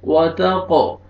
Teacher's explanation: فجور، را کو مرزبر ہے، را کو موٹا کر کے پڑھیں گے، فجورها، ہا کو کھینچنا ہے، الف مدہ. وتقو، قاف قلقلہ ڈبل ساؤنڈ آئے گا، وتقو، اور واو کو مرکھڑا زبر ہے، آپ نے کھینچنا ہے 1 الف کے برابر، اور لاسٹ میں الف مدہ ہے، ہا کو بھی آپ نے کھینچنا ہے 1 الف کے برابر.